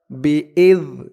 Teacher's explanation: জালের উচ্চারণটা একদম নরম হবে জিহ্বার মাথা উপরের দাঁতের মাথার সাথে লাগবে